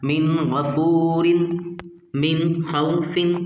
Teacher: نون کو ظاہر کر کے پڑھنا، غنہ نہیں کرنا